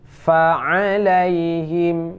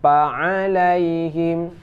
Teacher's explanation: Ya, jangan sampai seperti orang Sunda. Orang Sunda meletakkan bibir bawah dengan bibir atas. Jadi saat dikeluarkan suara keluar pa, bukan pa tapi fa.